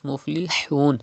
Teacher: It is ha, pronounced from the middle part of your throat like this. Muflihun. Do not say muflihun.